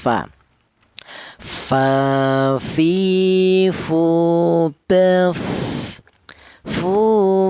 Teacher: Untuk huruf fa ini hanya bibir bawah saja, akan tetapi bibir bawah yang bagian dalam. Kemudian menyentuh ujung gigi seri atas.